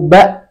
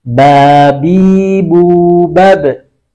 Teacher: Ketika mengucapkan ba, tidak keluar udara sama sekali. Ba, ditahan dia. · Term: sifat jahr